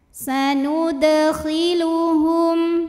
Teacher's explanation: cara bacanya dipantulkan dengan pantulan yang kecil